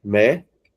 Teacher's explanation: Então, a última não é oxítona. A penúltima não está sendo acentuada, então não é paroxítona, mas sim a antepenúltima sílaba. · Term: proparoxítona